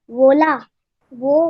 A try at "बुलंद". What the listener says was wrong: नहीं है, अरे आप लोग क्या बोल रहे हैं? बोला कहाँ लिखा है? बुलंद लिखा है, बुलंद।